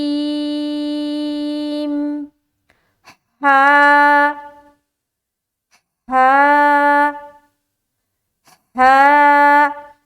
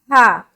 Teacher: ہا کو جب ہم ادا کرتے ہیں نا تو ایک ہوا کی سی آتی ہے حلق سے